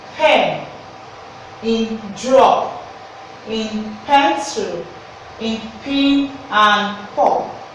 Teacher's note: when you pronounce the sound the upper lip and the lower lip comes together